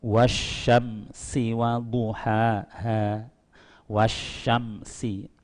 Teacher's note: wasnya itu tengah lidah, sinya itu meringis gigi